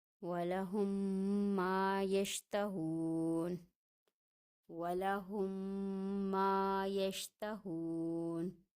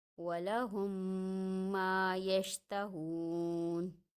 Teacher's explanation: اگر میم ساکن کے بعد میم مشدد آ جائے تو وہاں ادغام ہوگا، یعنی دونوں میم آپس میں مل جائیں گے اور ان کو غنے کے ساتھ ادا کیا جائے گا، جس کی مقدار 2 سے 3 حرکت کی ہوگی۔ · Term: ادغام شفوی